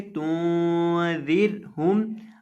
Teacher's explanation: زبان کی نوک سامنے والے اوپر کے دو دانتوں کے کنارے سے لگائیں گے تو دال ادا ہوگا۔